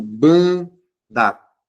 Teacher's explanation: Eles nasalizam. O som sai pelo nariz, tá? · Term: vogais nasais